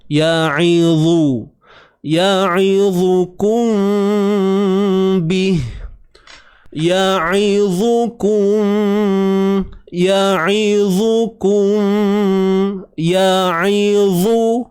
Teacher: Dha ni baris depan tebal.